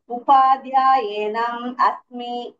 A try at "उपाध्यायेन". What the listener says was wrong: no not enam upadhyayena